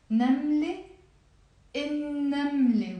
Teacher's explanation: We don't pronounce the lam because it's a sun letter.